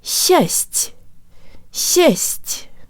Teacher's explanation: because the tongue is high for both sets of consonants it doesn't have time to move to a very low or open position for the AA vowel so the whole syllable sounds like this just just not just